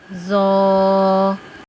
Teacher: تو ہمارا اگلا حرف ہے ذو نرمی والے حروف میں سے ہے اور اس کو ادا کرتے ہوئے زبان کی نوک سامنے والے 2 دانتوں کے سرے سے لگے گی